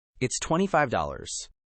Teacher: Say the price with a confident falling tone, not a question.